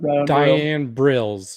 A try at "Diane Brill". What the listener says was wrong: You said Brills twice.